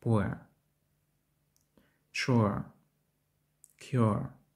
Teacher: Дифтонг іноді вимовляється як your. Вимова починається з голосного you, що переходить в нейтральний короткий звук e.